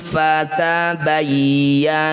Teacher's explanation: meskipun dihentikan panjang mad thaobi'i tetap dua harakat saja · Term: mad thobi'i